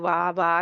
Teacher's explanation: होठ बिल्कुल गोल नहीं किए हुए वा वा कह रहे हैं वा तो उसमें आ अलिफ की आवाज भी सुनाई दे रही होती है वा तो ये नहीं होनी चाहिए इसमें जो गलती है इसको